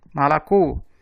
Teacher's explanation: As 3 sílabas têm a letra O, mas na sílaba tônica ela é pronunciada com o som de O mesmo. Sílaba tônica, co, malacô.